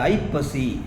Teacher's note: ஐப்பசி முதலெழுத்து ஐ, அந்த ஐ 1.5 மாத்திரையாக ஒலிக்குது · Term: ஐகார குறுக்கம்